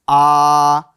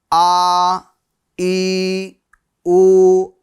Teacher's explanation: एक अलिफ की मिकदार खींचेंगे। हुरूफ मद्दा की तरह। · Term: खड़ी हरकात